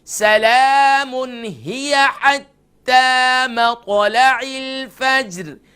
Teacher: مطلع، میم کے بعد قا قلقلہ ہوگا، لام لائٹ ہوگی، عین کے نیچے زیر ہے، اس کو عین کا ساؤنڈ ادا کریں گے نہ کہ اس کا حمزہ کا ساؤنڈ